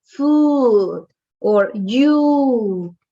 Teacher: like in spanish ooh but it's a long sound